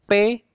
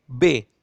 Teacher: Perbedaannya terdapat pada dengungan yang dibutuhkan oleh kedua huruf tersebut. Yang satu tidak berdengung, P tidak berdengung, B membutuhkan dengungan sedikit walaupun tidak banyak. Yang membutuhkan sedikit dengungan inilah yang disebut dengan bunyi bersuara.